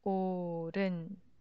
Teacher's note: When hit meets 이응, the circle-looking 이응, hit becomes 이응. So assimilation, you can see it as assimilation. So 오른, the h sound disappeared.